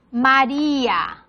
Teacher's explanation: Ma es átona y A es átona, porque la sílaba tónica, la fuerte es ri.